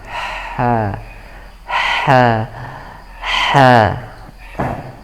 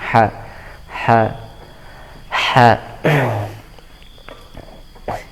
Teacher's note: Ada yang seperti itu karena ingin memperjelas haknya ya, karena ingin memperjelas haknya maka berlebihan dalam makhrajnya, dalam menempelkan tenggorokannya, dinding tenggorokannya, karena ha ini makhrajnya di antara dinding tenggorokan ya, bagian tengah, depan dan belakang